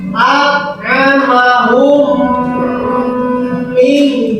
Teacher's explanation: Nah, ke dalam huruf mim yang kedua, maka membaca mimnya itu harus rada panjang, ya, antara 2 harokat, ya, 2 harokat atau 2 ketukan. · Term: idgham mutamatsilin